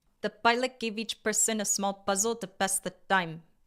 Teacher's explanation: aspirated t, p, k with more air plus the long vowels